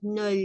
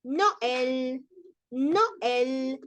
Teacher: decimos no sino que vamos a decir no el no el separamos y damos protagonismo a la o y damos protagonismo también a la e